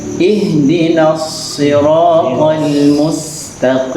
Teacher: shad musyammah bisautuz zai, huruf shad yang mirip dengan suara zai.